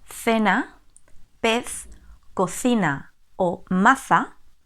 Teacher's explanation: La punta de la lengua se pone entre los dientes. Por eso se dice que es un fonema interdental. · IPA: /θ/